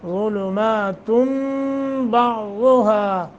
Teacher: سحاب غلمات ایسے کر کے پڑھیں گے غلماتم ذا کو موٹا نون تنوین کے بعد با آیا ہے تو نون تنوین کو میم سے بدل کر پڑھیں گے